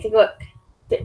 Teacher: I'm actually not even pronouncing the last K.